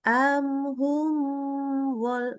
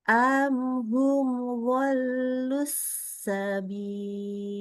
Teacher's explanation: Jelas-jelas aja huruf mimnya ya, tidak boleh kita kasih tambahan dengung. Ya, kita jaga sifat huruf mim yang tawasud. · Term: idhar